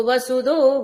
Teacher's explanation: వసుధ అన్నప్పుడు మహాప్రాణ ధకారం కాదండి మామూలు దకారమే మహాప్రాణం పెట్టకండి